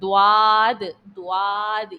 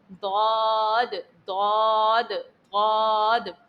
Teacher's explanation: जबान का जो ये साइड है जो बगली किनारा है इस चीज को ऊपर की दाढ़ में लगाना है दांतों में नहीं दाढ़ में लगाना है अंदरूनी जो दाढ है वहां पर दद दद दद प्रैक्टिस कीजिए